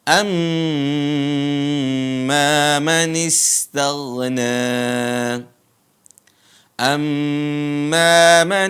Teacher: ada mim bertasdid ditahan dua harakat atau sampai empat harakat